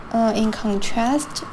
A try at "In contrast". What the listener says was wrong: It's contrast, not contrast. So she put the stress here on the wrong syllable. Just unfortunately, as far as pronunciation goes, that stress is going to count against her.